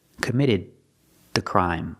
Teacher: The D at the end of committed is before a consonant, so it's a stop D. Stop the air. Committed the crime link to the next word, the committed the crime.